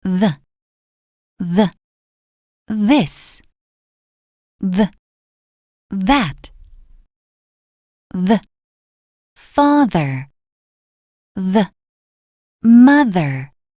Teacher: 혀를 니에 바짝대고 공기를 뿜어 내면서 성대를 울려요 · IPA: [ð]